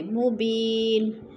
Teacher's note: مبین یا ساکن سے پہلے با کے نیچے زیر ہے تو ادھر یا مدہ. اور مبینن 2 پیش تنوین ہے، وقف کی صورت میں جزم میں بدل کر پڑھیں گے